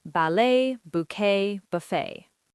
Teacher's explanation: All French words where the t is silent.